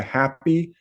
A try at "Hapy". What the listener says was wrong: I'd say happy. said the A a little long, but yeah.